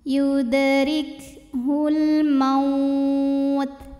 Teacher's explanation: alif lam qamariyah karena alif lam menghadapi huruf qamariah yaitu mim maka lam sukun dibaca jelas